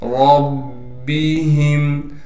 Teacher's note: رَبِّهِمْ، را کو موٹا کر کے پڑھیں گے، اس لیے کہ را پر زبر ہے اور را کو پھر ہم آگے با سے ملا دیں گے، اس لیے کہ با پر تشدید ہے، تشدید ہونے کی وجہ سے تھوڑا ٹھہراؤ کریں گے، پھر ہا کو میم سے ملا دیں گے، اس لیے کہ میم ساکن ہے اور بغیر غنہ کے ملانا ہے۔